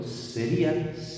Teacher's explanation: si yo lo pronuncio sería, esta I la pronuncio como abierta, ¿vale? Y pasaría de ser abierta, de ser cerrada, pasaría a ser abierta. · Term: hiato